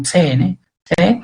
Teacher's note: na verdade você pode pronunciar só o t aqui, que já é aspirado, você não precisa aspirar esse e